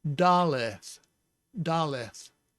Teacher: And then under the lamed, it has the segol, so it's an eh sound. And then there's no dogish, so you get the fricative th sound